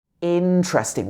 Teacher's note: We stress the in part of the word.